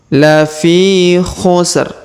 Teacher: huruf Fi kita panjangkan dua harakat karena di depannya terdapat Ya Sukun